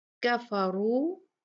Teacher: ہم اپنے ہونٹوں کو گول کریں گے کیونکہ اس را پہ ضمہ ہے، یہ بھی مفخم بھاری پڑی جائے گی